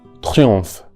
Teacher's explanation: In this phrase, the most difficult part could be the nasal vowel on, which is, as I said many times, the O that we find in the English word Lord, but nasalized.